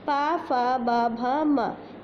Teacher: पा, फा, बा, भा, मा, इनका उच्चारण ओंठ से होता है। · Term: पा वर्ग